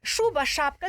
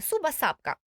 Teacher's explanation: якщо дитина не вимовляє звук ш так шуба-шапка дитина вимовляє суба-сапка